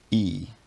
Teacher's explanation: you might be able to feel that when you pronounce it the tongue is extended high and forward in the mouth and your lips aren't rounded · a high front unrounded vowel is e